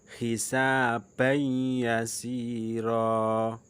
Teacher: Nah, itu adalah tanwin bertemu dengan ya. Hisabai. Nah, bukan hisaban tapi hisabai. Bacanya mendengung. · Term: idgham bi ghunna